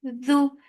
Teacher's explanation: Dhu, for dhamma circle lips, and the sound is short.